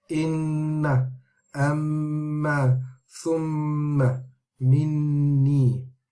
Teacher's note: the nasal sound is emphasized when the Noon or the Mim has a shadda on it. So with this Ghunnah, there will be a strong, meaning a longer Ghunnah, and we'll talk about the different levels of Ghunnah later in this course. · this Noon mushaddada or Mim mushaddada has the strongest and the longest Ghunnah of all of them